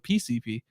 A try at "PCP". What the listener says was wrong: I need more emphasis on the C.